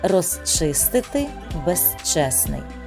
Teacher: якщо корінь починається шиплячим приголосним під його впливом кінцевий звук префікса змінюється на глухий с